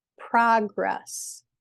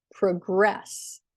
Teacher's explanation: For words that are both nouns and verbs, we have a lot of words in English that can be used as a noun or a verb, like progress and progress. So as a noun, the first syllable is stressed. As a verb, the second syllable is stressed.